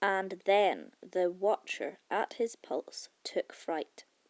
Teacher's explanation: Iambic pentameter, and iamb, is really just a pair of syllables, the first one being unstressed and the second one stressed. In the case of iambic pentameter, you have lines with five of these iambs hanging out together.